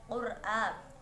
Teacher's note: bacaan ro tafhim karena terdapat ro sukun yang didahului dengan huruf yang berharokat dhamma, maka ro-nya dibaca tebal. A bacaan mat badal karena terdapat hamzah atau alif yang dibaca panjang karena terdapat harokat fathah berdiri.